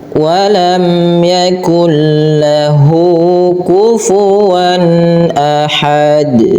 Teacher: Izharnya tapi di sini bukan izhar syafawi tapi izhar halqi yang di mana harus dibaca dengan jelas suara tanwinnya